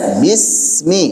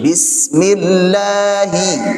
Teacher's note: sin punya sifat rakhawah, ngalir suaranya. Kemudian dia tipis, tajam. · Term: safir